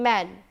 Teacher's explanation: when there are vowel sounds in between two nasal consonant the vowel sound becomes nasalized why because preceding sound is nasal following sound is nasal then